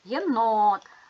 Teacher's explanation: ставимо наголос єнот наголос падає на о